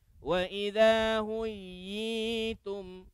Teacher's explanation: huyi itu dipanjangkan lah, 2 harakat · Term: mad tamkin